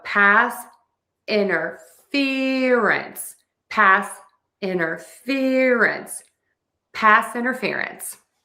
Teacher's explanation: you can drop the t all together and say inner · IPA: /pæs ˌɪn.tɚˈfɪr.əns/